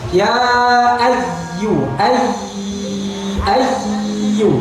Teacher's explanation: Makhrajnya ada di syajariyah, lidah bagian tengah. Kemudian penekanan itu dalam rangka menjaga kesempurnaan sifat rokhawah atau mengalirkan suara. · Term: ya tasdid